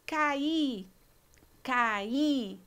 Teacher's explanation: dois sons vocálicos separados um hiato